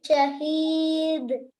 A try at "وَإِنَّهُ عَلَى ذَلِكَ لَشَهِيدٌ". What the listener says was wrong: A little more bouncing. Lashahid, lashadid. It comes in the last of the word. So that those are qalqalatul wasat. That means middle, level 2. Should be done a little more than level 1.